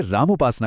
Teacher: देखिए, राम के आखिर में अ की आवाज है और उपासना के शुरू में ऊ की। जब ये अ और ऊ मिले तो ओ की ध्वनि बन गई